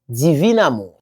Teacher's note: On écrit divin amour mais on prononce divine amour.